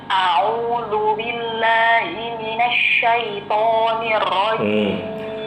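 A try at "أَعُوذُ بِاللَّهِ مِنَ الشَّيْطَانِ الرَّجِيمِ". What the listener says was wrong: Ibu perhatikan saat baca mina. Coba Ibu lihat saya. Mina, mulutnya buka. Nah, jangan cepat-cepat. Jadi jangan dibaca seperti ini. Minas. Jadi nanya kurang dibuka.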